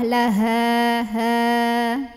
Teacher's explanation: hak yang dari tenggorokan bawah, bawaannya berat. Kemudian ya, tenggorokan kita bergetar ya, tenggorokan paling bawah.